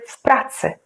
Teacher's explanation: And because P is a voiceless consonant, then W sounds like F.